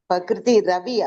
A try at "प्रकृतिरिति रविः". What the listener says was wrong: பிரகிருதி ரிவன்னு இருந்ததுன்னா அத ரித்தின்னு மாத்திக்கோங்க. ரித்தி ரவி.